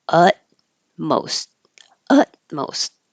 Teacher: You won't hear either of those T's.